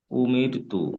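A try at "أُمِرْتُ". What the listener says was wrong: হ্যাঁ, এখানে মানে রটা উচ্চারণ হওয়ার সময় মুখ গোল হবে না, এমনি স্বাভাবিক অবস্থা থাকবে, উমির তু।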